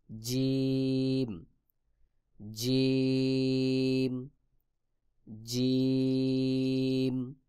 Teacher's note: জিম জিহ্বার মধ্যখান তার বরাবর উপরের তালুর সঙ্গে লাগাইয়া জিম উচ্চারণ হবে।